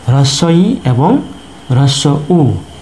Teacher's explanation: হ্রস্ব ই এবং হ্রস্ব উ, এই দুটি স্বরধ্বনি হচ্ছে উচ্চ স্বরধ্বনি, কারণ এই দুটি স্বরধ্বনি উচ্চারণ করার সময় আমাদের জিহ্বা সর্বোচ্চ অবস্থানে থাকে।